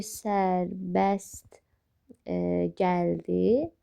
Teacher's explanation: Sərbəst gəldi formasında olur və t hərfi düşür. · Əgər özündən sonra samit varsa, t hərfi düşəcək.